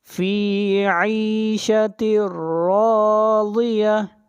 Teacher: یہاں سے تا کو ملائیں گے را کے ساتھ ، فی عیشت راضیہ، را کو موٹا پڑھیں گے، را کے · را کو موٹا پڑھیں گے، را کے اوپر زبر ہے اور را کو کھینچ کر پڑھیں گے 1 الف کے برابر،